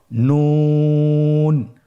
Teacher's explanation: একটি নোক্তা যদি থাকে তাহলে আমরা বুঝতে পারবো যে এটা হরফটি হলো নুন। নুন হরফটি উচ্চারণের ক্ষেত্রে অবশ্যই পাতলা করে উচ্চারণ করতে হবে এবং 3 আলিফ টেনে পড়তে হবে।